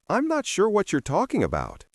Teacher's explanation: Match the reduced I'm not sure, the linked whatcha, and the flow of talking about, not talking about as separate words.